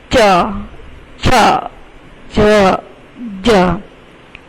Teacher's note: તો તાલવ્ય બોલતી વખતે તમારી જીભ છે એ તાળવાને સ્પર્શ કરશે.